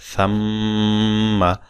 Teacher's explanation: তো আসলে আপনি তিন আলিফ করবেন ওয়াজিব গুন্নাটা। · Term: ওয়াজিব গুন্নাহ